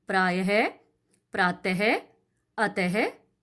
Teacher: हिंदी में विसर्ग का मूल उच्चारण समाप्त हो चुका है। इसका उच्चारण ह व्यंजन के रूप में किया जाता है। जब हम इसका उच्चारण करते हैं तो ह की आवाज आती है।